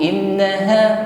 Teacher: In nun tasydid maka gunnah ya, ditahan dan sempurnakan bunyi dengungnya, jangan keburu.